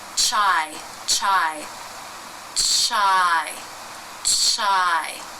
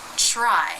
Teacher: making an R sound is to watch your lip position so the lips will need to come into an even tighter Circle to make the r in this cluster